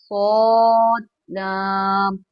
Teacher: स्वाद पुर ही निकलना चाहिए। मतलब मोटा निकलना चाहिए।